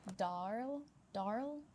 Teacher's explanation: in Australian English, we're using a dialect of English and accent that is non-rhotic. The short story is we only say R if a vowel sound comes after the R in a word.